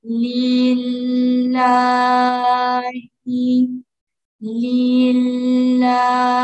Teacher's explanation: Bu yerda ham lam yumshoq, sababi kasrodan keyin kelyapti. Halikmat bilan cho'ziladi.